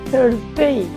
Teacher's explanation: অনেকটা বাতাস বের হবে হালকা, এবং থার্সডে, জিহ্বাটাকে আস্তে টেনে আমরা ভিতরে নিয়ে নিব